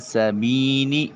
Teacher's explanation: اس کے بعد یا ساکن اور اس سے پہلے والے حرف با کے نیچے زیر ہے، یا مدہ کہلائے گی، اور ایک الف کے قائم مقام اس کو لمبا کیا جائے گا۔